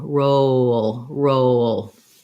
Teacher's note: oh roll roll don't don't exaggerate the w too much but you're naturally going to have that glide coming in when you move from the o to the little schwa we have before a dark l